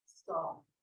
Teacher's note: The sounds in soft are all made in the front of the mouth.